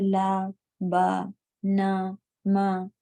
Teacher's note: ان سب میں کوئی ہوا نہیں ہے، آواز ہی ہے جس کو ہم صاف ظاہر کر کے پڑھ رہے ہیں. نمایاں ہو رہی ہے اس کی آواز، ظاہر ہو رہی ہے، اور سانس کا جاری رہنا نہیں پایا جا رہا ہے.